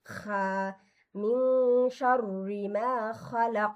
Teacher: আর খাটা উচ্চারণ হবে খসখসে, অর্থাৎ গলার ভেতরে একটা খসখসে একটা বা গড়গড়া একটা আওয়াজ হবে, যেমন খা মিন শাররি মা খালাক, এই যে খা এভাবে, বুঝতে পারছেন?